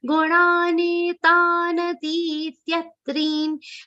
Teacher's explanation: First na is a long sound. Second na is a short sound. And the last ending third na is a half sound. So that pronunciation should be very clear at all 3 places.